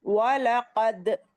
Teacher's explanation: قاف کو حلق سے نکالنا ہے